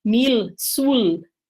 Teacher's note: um falante mais velho da língua ele ainda pronuncia esse L final